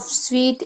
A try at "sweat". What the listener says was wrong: it is not sweet, it's sweat. Say it again, sweat.